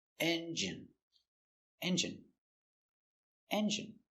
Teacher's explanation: Stress on the first syllable.